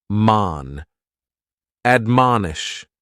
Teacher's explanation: admonish has 3 syllables, and the stress is on that second syllable, mon. Admonish, and this is a verb that we use with a direct object, to admonish someone, usually for doing something wrong, because what it means is to counsel or advise against something.